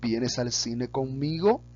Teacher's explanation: cuando hacemos una interrogación, la entonación al final de la oración hay una subida